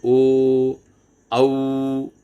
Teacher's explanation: ओ और औ, अब देखिए इसमें हमारे ओठों का भी आकार बदलता है। हम ओ बोलते हैं तो ओ औ, तो इसमें होठ भी हमारे काम करते हैं, और स्वर जो है वो सीधा गले से आता है, इसलिए इसको कंठोष्ट कहा गया है।